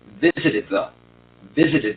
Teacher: see if you can make as good a th if you link it to the d in front of it